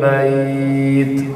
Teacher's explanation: karena ini dibaca waqaf jadi sukun, maka hamasnya lebih tebal, lebih kelihatan.